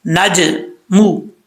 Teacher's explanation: جیم حروف قلقلہ میں سے ہے، ساکن ہے تو قلقلہ کیا جائے گا اس میں